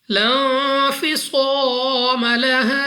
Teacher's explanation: لا انفصام لها، نون ساکن کے بعد فا حروف اخفا میں سے ہے، غنہ کر کے پڑھیں گے۔ صاد مستعلیہ میں سے ہے، پر یعنی موٹا پڑھنا ہے۔ الف سے پہلے زبر الف مدہ ہے، 2 سیکنڈ تک لمبا کریں گے، اور اس کے بعد الف سے پہلے زبر الف مدہ اور اس کے بعد وقف مطلق کی علامت، یعنی یہاں پر ٹھہرنا بہتر ہے، مگر یاد رہے کہ الف مدہ یعنی حروف مدہ بھی وقف میں تبدیل نہیں ہوتے۔